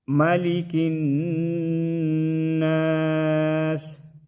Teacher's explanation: نون مشدد میں غنہ کریں گے، ناسی جب وقف کریں گے تو ناس پڑھیں گے.